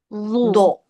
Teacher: huruf dnya ujung lidahnya tempelkan ke ujung gigi atas